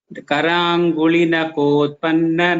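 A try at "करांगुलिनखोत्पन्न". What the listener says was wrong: Just that Mahaprana should be heard little more. That kha should be heard very clearly. Karanguli nakhotpanna. So there's a difference, right, between ka and kha.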